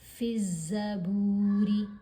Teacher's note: با کے اوپر پیش، ساتھ واو ساکن، تو یہ واو مدہ ہے اس لیے با کی آواز کو لمبا تھوڑا سا کریں گے۔ الف اور لام دونوں یہاں پر جو حروف ہیں یہ سائلنٹ ہیں کیونکہ زا حروف شمسی میں سے ہے، حروف شمسی سے پہلے جب الف اور لام 2 حروف اکٹھے آ جائیں تو دونوں ہی خاموش رہتے ہیں، سائلنٹ رہتے ہیں۔